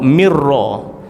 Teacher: bertemu dengan ra, mirra, tak baca min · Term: idgham